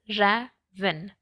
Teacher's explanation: So ra is accented and ven is unaccented